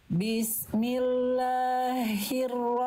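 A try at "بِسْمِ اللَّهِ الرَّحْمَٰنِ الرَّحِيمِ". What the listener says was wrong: Nah, jangan kepanjangan. Jangan kepanjangan. Bismillah, 2 harokat. Hi-nya yang pertama, bismillahi itu hak besar. Bismillahi, bukan hi tapi hi. Yang hak kecil, yang hak kecil vokal i-nya itu yang dibaca jadi hak kecil atau berbisik itu hak kecil yang akhir.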